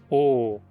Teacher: A língua fica para trás, a 1/3 da distância entre U e A, e os lábios arredondados. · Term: semi-fechada posterior arredondada